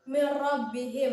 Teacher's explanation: maka cara membacanya adalah dimasukkan dengan tidak mendengung karena idgham artinya memasukkan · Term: idgham bilagunnah